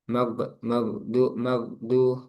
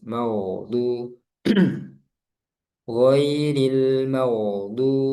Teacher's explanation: Terakhir di ghain. Nah, itu dialirkan, jangan seperti huruf G. Mag, magdu, tapi mau ngalir dan halus.